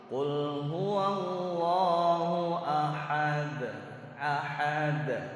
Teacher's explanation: Asalnya dun disukunkan, kemudian dikolkolahkan. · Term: kubro